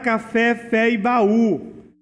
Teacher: primeiro nós temos que ver se é oxítona parece que todas são acentuadas na última sílaba